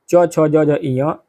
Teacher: इसके अनुसार ई च वर्ग, ई और च वर्ग, च छ ज झ ञ, य और श, इनका उच्चारण स्थान क्या है, तालु यानी कि तालव्य है।